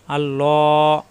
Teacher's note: লা না হয় ল হবে, ল আকার প্রকাশ পাবে না, কারণ আল্লাহ শব্দের লামের ডানে জবর আসছে। আল্লাহ শব্দের লামের ডানে জবর এবং ফেস আসলে আল্লাহ শব্দ ল হবে, লা হবে না।